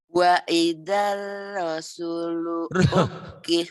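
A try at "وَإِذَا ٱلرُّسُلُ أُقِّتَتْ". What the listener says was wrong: Enak aja Rasul. Rusulu Bu.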